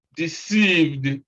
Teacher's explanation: Then number 10 is deceived. Again, the sound is D, deceived, because V is a voiced sound.